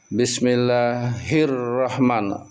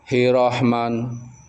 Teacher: rnya itu tebal dua kali rahman bukan hrahman nirrahim. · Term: ro tahkim